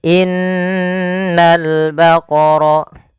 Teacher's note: Cara membacanya, menahan dulu suara n-nya sepanjang 2 harokat baru dilepas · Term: gunnah